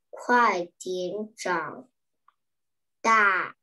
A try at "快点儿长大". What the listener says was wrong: 好 ， 这 个 词 儿 跟 我 读 一 遍 啊 ， 快 点 儿 ， 快 点 儿 ， 对 ， 你 刚 刚 儿 化 没 有 读 出 来 啊 ， 我 们 要 读 把 儿 化 音 读 出 来 ， 快 点 儿 长 大 ，